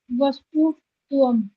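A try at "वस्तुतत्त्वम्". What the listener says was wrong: जो सेकंड वाला त है वो आपको ठीक बोलना पड़ेगा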